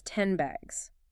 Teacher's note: The N sound is made with the tongue tip on the alveolar ridge behind your teeth, but the next sound is B, made with the lips. Okay. So to make it easier, the N sound might shift its position slightly, becoming more like an M sound M, which is also made with the lips. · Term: Assimilation